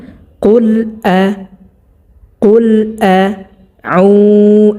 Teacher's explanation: এই হামজাটা হলকের শুরু থেকে উচ্চারণ হবে 1 নম্বর মাখরাজ থেকে একেবারে স্পষ্টভাবে